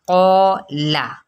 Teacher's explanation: اس لیے کہ قوف پر ہے تو یہ الف بھی پر ہو جائے گا. قولا، ٹھیک ہے، کالا نہیں پڑھنا یا بریکالا نہیں پڑھنا، ٹھیک ہے.